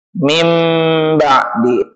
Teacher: menukar bunyi n ditukar ke dalam bunyi m bila mana nun sukun dan atau tanwin bertemu dengan satu huruf yakni ba. Min ba'di menjadi mim ba'di, ditukar. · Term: yaqlab